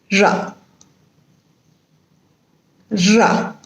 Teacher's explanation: In flap, there is only one tap of the tip of the tongue against the teeth ridge. Just one tap against the teeth ridge.